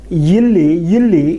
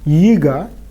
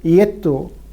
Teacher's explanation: a y glide has been added to all words beginning with a front vowel.